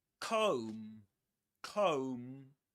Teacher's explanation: The B silent at the end.